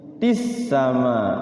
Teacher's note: Mada mad tabi'i, matis sama, di situ ada al. Iya, jadi alnya tidak berbunyi alnya, tapi tulisannya ada tuh al tuh, namanya al syamsiyah atau al idgham. Jadi masuk langsung ke sin.